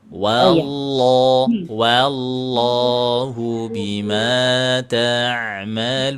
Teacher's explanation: Itu lafaz Allah juga dinaikkan ya pangkal lidahnya.